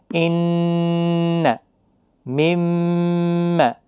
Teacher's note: زبان تالوں کے ساتھ لگ کر ساؤنڈ روک دیتی ہے اور گنگنی آواز ناک کے ذریعے سے آنی شروع ہو جاتی ہے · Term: گنہ